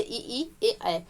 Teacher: जिन स्वरों के उच्चारण में जीवा का अग्र भाग सक्रिय होता है उन्हें अग्र स्वर कहते हैं